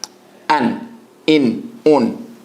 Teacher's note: with the hamza, there is an abrupt cut-off